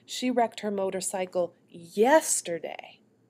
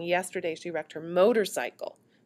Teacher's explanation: I want to focus at the end of the sentence, the new information, yesterday. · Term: end focus